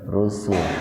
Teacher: bentuk jamak sinnya dibaca pendek